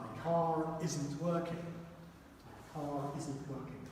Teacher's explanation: So try and see if you can go directly from the R into the I.